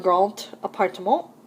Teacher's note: in liaison, the D of grand is pronounced like a T.